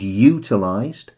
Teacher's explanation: they all have the emphasis on the first syllable